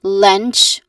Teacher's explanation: starts with the letter L sound, and then followed by a short E vowel sound, and then followed by a nasal sound, which is the N sound.